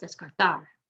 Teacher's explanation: ends in an r we're going to emphasize the last syllable